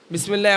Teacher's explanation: বিসমিল্লাতে কোনো জায়গায় ঠোঁট গোল হবে না